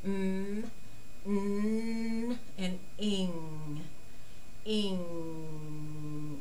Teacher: Now, the primary vowels are M, mm, the sound is coming up high, mm, n, and ing, ing, and you can almost feel it resonate up into the nasal cavity